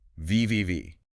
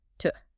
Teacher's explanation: But the T into is voiceless, just air, to. Okay. Because your mouth is already getting ready for that voiceless T, it's easier to make the sound before it voiceless too.